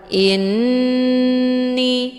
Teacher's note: lakum inni malak tasdid di huruf nun dinamakan dengan gunah musyaddadah cara bacanya hamzahnya dileburkan ke dalam huruf nun dengan cara ditekan kemudian ditahan lebih kurang dua kali ketukan · hamzahnya dileburkan ke dalam huruf nun dengan cara ditekan, kemudian ditahan lebih kurang 2 kali ketukan. Inni. Hukum bacaan ghunnah musyaddadah dibacanya sambil didengungkan.